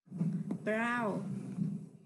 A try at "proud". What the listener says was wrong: Proud. Yeah, so make sure when you see the letter D, make sure you say it. You have to say it, okay?